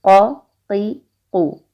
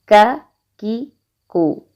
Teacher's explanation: قاف، یہ موٹا ہوتا ہے، اس کو پر کر کے پڑھتے ہیں، اور کاف جو ہوتا ہے یہ باریک پڑھتے ہیں